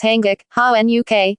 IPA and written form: haːnɡuk (Hanguk)